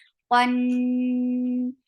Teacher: Keep the sound in your nose for a longer time because this is akmal gunna.